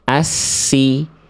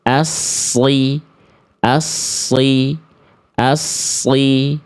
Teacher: berarti kalau huruf sin dia dibaca dengan tarqiq dengan keadaan tipis atau suara ringan